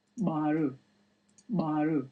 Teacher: the very distinctive implosive sound